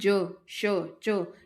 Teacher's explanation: ज श च ये सब आपकी जो है तालू से टकरा रही है